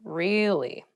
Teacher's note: to show that you're not so interested in the conversation with downward intonation